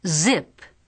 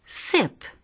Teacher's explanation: Make a sound with your voice. The only difference between z and s is the sound of the voice.